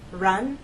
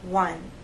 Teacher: with r there's a gentle rounding of the lips but you hold that position until you get to the next sound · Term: the r sound